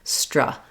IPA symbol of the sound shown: ə